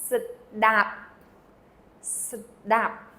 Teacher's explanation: So you have an S first, and then da, and it ends again with a P, which is not pronounced.